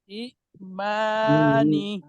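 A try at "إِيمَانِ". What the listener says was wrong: এখানে একটা টান হবে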